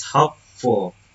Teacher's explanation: The base word is hope, the derived word to hopeful, the suffix is full. The primary stress remains on the first syllable of the base hope. The suffix full does not form a new stress domain, so the original stress is preserved.